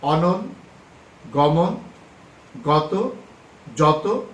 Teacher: অকারান্ত ধ্বনির পূর্বে শব্দের আদ্য অধনির উচ্চারণ সাধারণত বিবৃত হয়।